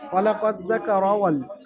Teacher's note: হারাকাতের কায়দা তাড়াতাড়ি পড়বেন, শুধু মিম আলিফ জাবারটা টান হবে